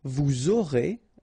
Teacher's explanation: final S not pronounced, and then you make the liaison